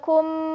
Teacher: Mim sukun bertemu mim. Dibaca masuk dan mendengung selama 1,5 alif. Ya, ketika mim sukun bertemu dengan huruf mim lagi, kita kenal dengan istilah idgham mislain, yaitu idgham yang artinya masuk, mislain yang artinya 2 huruf yang semisal.